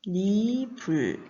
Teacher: 솜과 이불이 합해지면서 이모음 앞에 이응 빈 자리에 니은이 첨가되는 현상입니다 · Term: 니은 첨가